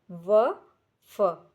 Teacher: दंतोष्ठ जो दांत और होठों की सहायता से बोले जाते हैं। इन ध्वनियों के उच्चारण के समय जीभ दांतों को लगती है तथा होठ भी कुछ मुड़ते हैं।